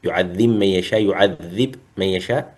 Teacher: وأما الباء فأدغمها في الميم في قوله ويعذب من يشاء